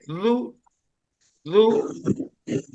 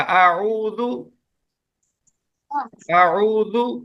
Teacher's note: نرمی سے ایسے پڑھیں گے کہ زبان کی نوک، زبان کی یہ جو نوک ہے نا سامنے، یہ نوک آپ کے اوپر والے دو دانتوں کے یہ کنارے پہ لگانی ہے. نرمی سے، نرمی سے ذو ذو.